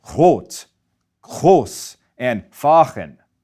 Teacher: Speakers in the central and northern parts of Germany pronounce it low and in the back of their throat. If you know French, it's that sound. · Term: German R